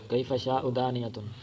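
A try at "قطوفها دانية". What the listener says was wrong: نہیں کیوں لفظ چھوڑ رہے؟ لفظ کیوں چھڑنا ہے بچوں؟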